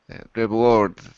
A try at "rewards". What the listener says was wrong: You have to vibrate a little bit more, but you got it. Rewards.